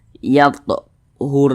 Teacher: dah maka huruf ra sukunnya itu dibaca tebal dibaca tkhim sehingganya huruf ini kita tebalkan pangkal lisan itu naik terangkat ke atas ketika Kita mengucapkannya